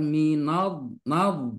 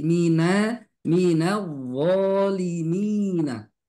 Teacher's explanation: di sini yang harus kita pahami adalah mi na tipis, wo tebal.